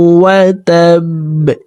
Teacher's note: বা কলকলার হরফ নিচের দিকে ধাবিত করে ধাক্কা দিয়ে বাকে সাকিন করে ফেলবো।